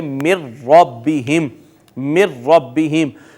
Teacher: یہاں دیکھیے ناظرین نون اور را دونوں اکٹھے آ گئے ہیں، اور نون اور را دونوں قریب المخرج ہیں، دونوں قریب قریب سے ادا ہوتے ہیں، دو اکٹھے قریب المخرج حروف آئے، پہلا ساکن ہے دوسرا متحرک ہے، تو پہلے کو دوسرے میں ضم کر دیا، اور اس کو پڑھیں گے من ربہم، من ربہم۔